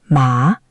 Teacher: Second tone, rising. Ma, that's hemp or the numb tingly feeling.